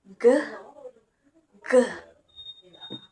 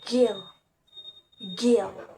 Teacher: K and G are distinguished by voicing, where K is voiceless and G is voiced. The sounds are produced at the velar place, with the tongue touching the back part of the roof of the mouth. The manner is plosive.